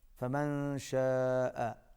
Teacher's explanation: نون ساکن کے بعد شین ہے، اخفا ہوگا، آواز ناک میں جائے گی۔ شاء، بڑی مد ہے، کھینچ کے پڑھیں گے۔